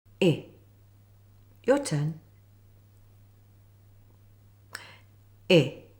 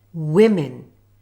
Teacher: Let me show you how to make the I sound. Put your tongue high in the center of your mouth, with your jaw fairly closed and your lips spread. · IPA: /ɪ/